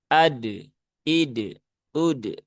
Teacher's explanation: jadi cukup pantulkan ketika sudah menyentuh makhraj dari huruf dal itu segera pantulkan ya, segera dilepaskan. Dan ingat jangan sampai berlebihan sehingga seolah-olah menambah huruf hamzah di belakang huruf dal. · dalnya itu ada kolkolahnya. Ya, sehingga ya dia dibaca dengan dipantulkan ya. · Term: qalqalahnya